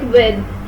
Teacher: the air comes out from the lungs and goes directly outwards with little obstruction, which is offered by the rounding of lips. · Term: semivowel or approximant